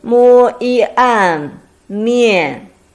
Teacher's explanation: the first one is mian, which is a combination of mo and yan with the fourth tone